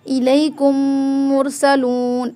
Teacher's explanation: تو ہم دونوں میم کو آپس میں اکٹھا کر کے ان میں غنہ کریں گے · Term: ادغام شفوی